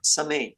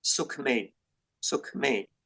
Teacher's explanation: But if one of the consonants is like made or te, in this kind of combinations, this a will change a bit into e